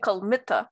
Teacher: But if you compare it to words like kalm, which is the word for snake, you get kalmita with second syllable stress